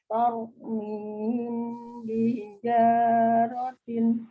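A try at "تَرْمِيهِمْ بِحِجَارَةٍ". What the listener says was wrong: Ya, masih kurang mimnya ya. Tarmihim bihijaratin. Jadi untuk ngerem ngetrilnya huruf pro itu pakai bibir ya, maksudnya ditahan. Kalau masih tar, itu belum ditahan. Tau, tau, mi, tau. Tau, mihim bihijaratin.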